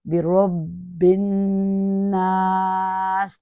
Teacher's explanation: الناس، تو اسی طرح دیکھیے با کے نیچے زیر ہے، تو زیر میں ہماری وائس جو ہے نا باریک تھن ہو جاتی ہے، ڈاؤن جاتی ہے